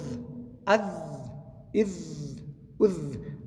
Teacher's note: د ژبې سر د غاښو د سرو سره لګېږي، دلته زال ادا کېږي